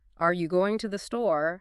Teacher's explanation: has a rising intonation at the end, indicating a question